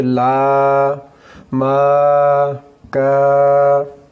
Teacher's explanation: ایک الف کے برابر کہہ سکتے ہیں، یا 2 سیکنڈ کے برابر اس کی مقدار آپ کر سکتے ہیں، جیسے لا، ما، کا، ٹھیک ہے۔